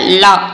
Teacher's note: லா வந்து மேற்பற்களின் அடியை தொடுவதால் லகரம் வந்து தோன்றும்